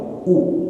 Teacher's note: U dhammah mulut kita mucu atau monyong.